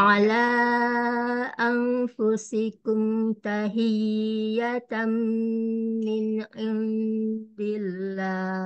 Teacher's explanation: Tahi ditinggikan saja suaranya ditekan jadi lebih tinggi dari huruf yang ada di sebelah-sebelahnya.